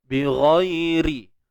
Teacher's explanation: huruf ra baris bawah ni kita akan baca dengan nipis sebab ada baris bawah